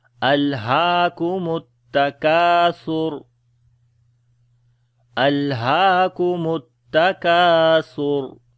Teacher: لام کے اوپر صفت توسط ہے، یعنی کہ درمیانی آواز ہوگی، آواز کو جاری رکھیں گے درمیانہ۔ ٹھیک ہے۔ ہا کو لمبا کریں گے، یہاں پر کھڑی زبر ہے۔